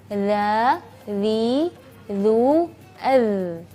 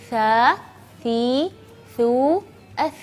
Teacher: makhrajnya adalah dari punggung ujung lidah dan ujung 2 gigi seri atas. Jadi kalau kita melafalkannya, lidah kita agak keluar sedikit. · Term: al-huruful lathawiyah